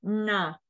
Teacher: esse n com pontinho ele significa retroflexo então a gente coloca a língua no céu da boca